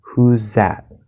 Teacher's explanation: In fast speech, the Z sound, like in whose, can cover the voiced TH sound.